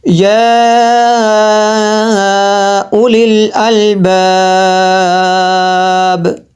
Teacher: ہم نے یہاں پہ ایک مد کیا ہے، یہ جو آخری لفظ کو تھوڑا زیادہ لمبا کیا 3 الف کے برابر. تو اس کو جو ہے ہم نے اس لیے لمبا کیا، یہ جو با ہے، با کے نیچے زیر تھی تو اس کو ہم نے ساکن کیا، یہاں پہ مد عارض ہو.